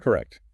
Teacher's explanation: It has two clear syllables with the stress on the second one. For practice, really try to articulate that final t sound.